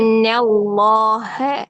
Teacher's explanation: نون باریک ہے، ہاں بھی باریک ہے، صرف اس میں جلالہ موٹا ہے، ٹھیک ہے؟ تو صرف اس میں جلالہ کا نام موٹا کریں گے، ہاں کو موٹا نہیں کریں گے.